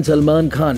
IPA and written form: səlˈmaːn xaːn (Salman Khan)